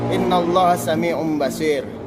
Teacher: Dalam hukum nun mati atau tanwin, iklab berarti menukar atau mengganti nun mati menjadi tanwin. Nun mati atau tanwin menjadi mim mati disertai dengan dengung. Nun mati atau tanwin dibaca iklab apabila bertemu dengan ba.